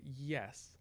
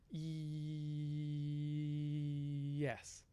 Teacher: and you hold it on that on the y yes so you have essentially a vowel but being used in a consonantal way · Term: glide